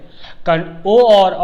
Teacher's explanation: ओ और औ जो है कंठ और ओष्ठ से उच्चारण स्थान इसका होता है, यह कंठ और ओष्ठ से बोले जाते हैं। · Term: कंठोष्ठ